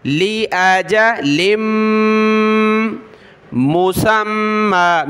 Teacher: لام کو میم کے ساتھ ملا، ناک میں آواز پیدا کی